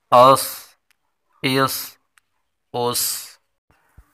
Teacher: صاد پر حروف ہے اور سیٹی والا حروف ہے، اس لیے اس کو سیٹی کے ساتھ پر بھی پڑھیں گے